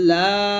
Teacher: এটা মাদের হরফ তিন টান দিবেন